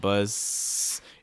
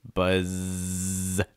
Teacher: make sure we say that buzz sound make sure your throat's vibrating enough it's not buzz it's buzz try to make sure that that's